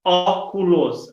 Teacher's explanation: óculos a sílaba tônica é a antepenúltima